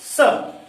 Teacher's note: तो हम इसको जब जीभ अपने दांत पर हम टच करते हैं तो इस तरह से जीभ को दांत पर टच करते हुए इसकी आवाज हम निकालते हैं। ऊष्मावाद, उसमें जो हमारी ऊष्मा होती है, संघर्षी ऊष्मा निकलती है इसमें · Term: ऊष्म व्यंजन, ऊष्म वर्ण